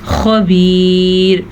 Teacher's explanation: وقف کی صورت میں را باریک پڑی جائے گی کیونکہ جب ہم یہاں پہ وقف کریں گے تو را ساکن ہو جائے گی.